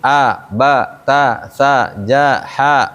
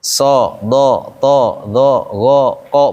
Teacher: Huruf tipis bunyinya A, huruf tebal bunyinya O.